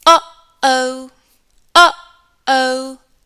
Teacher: A glottle stop is when you briefly close your vocal cords to stop the airflow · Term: glottal stop